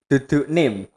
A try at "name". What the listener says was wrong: Iya, maksudnya ini di sini ada suara e yang ini. Nah, bunyikan e. Name